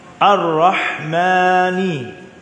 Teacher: Huruf ha tadi dia alhams, dia ar-rukhawah, combine sekali. Angin pun ada, lepasan suara pun ada.